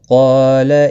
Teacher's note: قاف مستعلیہ میں سے ہے، پر پڑھا جائے گا۔ اس کے ساتھ میں الف بھی آیا ہے، یہ بھی پر پڑھا جائے گا، اللہ کو کھینچنا نہیں۔